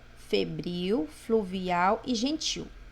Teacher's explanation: Febril, fluvial e gentil, porque são palavras oxítonas, porque a última sílaba dessas palavras é forte